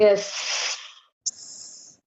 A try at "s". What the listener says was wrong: No, you don't have to pronounce S. You don't have to say S. You need to create sound. Air above the tongue. Air above the tongue. Don't say don't say yes. Don't say yes or S.